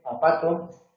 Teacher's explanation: Linguointerdentales, aunque ya digo que no es necesario morderse la lengua para decir zapato